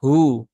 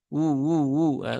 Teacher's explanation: dia cukup dibaca panjang dua harakat saja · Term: Mad Silah sugro